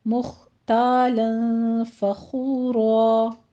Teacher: مخ میں خا کو پر پڑھنا ہے · فخو میں خا کو پر پڑھتے ہوئے واو مدہ ادا کیجیے